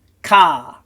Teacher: a Kamatz, which as you can hear is a longer A sound